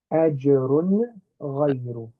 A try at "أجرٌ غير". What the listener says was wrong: So you're not letting your tongue touch the back of your teeth to make the n sound.